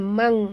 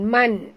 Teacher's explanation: Mana kalau di Melayukan ejanya mang, M-A-N-G, mang, ya. Mang, bukan man, ya, tapi mang dengung, ya. · Kita sembunyikan, ya. Separuh dari bunyi nun itu ke dalam huruf kaf. Jadi bunyi dia mang, ya. · nun mati bertemu kaf, masukkan bunyi nun ke dalam kaf disertai dengung, dua harakat